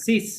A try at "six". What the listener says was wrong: cis not six cis